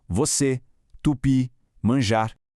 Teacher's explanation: A sílaba forte é sempre a última. Escuta só como a energia da pronúncia vai toda lá para o finalzinho. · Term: oxítonas